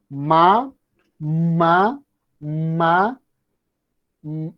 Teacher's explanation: this sounds comes through the nose and through oral cavity also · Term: nasal sounds